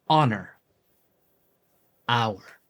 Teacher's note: note that in some words of French or vulgar Latin, the H is silent.